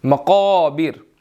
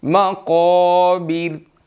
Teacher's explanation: میم باریک ہے، قاف موٹا ہے، الف کو بھی موٹا پڑھیں گے